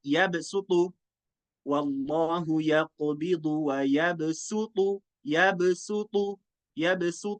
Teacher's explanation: Sin jangan sampai baca SH